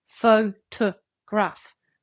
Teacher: It is a weak, neutral vowel sound that appears in unstressed syllables. In photograph, the second and third syllables are reduced. They don't keep strong vowel sounds. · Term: schwa